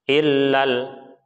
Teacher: Jadi fathahnya alifnya tidak terbaca panjang. Illal karena kalah dengan sukun yang berada di lam selanjutnya.